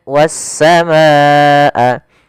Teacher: alif lam yang ditulis tapi tidak terbaca lamnya, sehingga langsung ke huruf sin yang berharakat tasdid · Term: alif lam syamsiyah